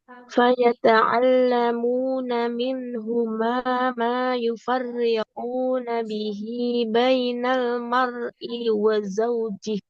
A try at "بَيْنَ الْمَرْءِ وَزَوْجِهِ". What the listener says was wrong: I-nya juga nggak panjang.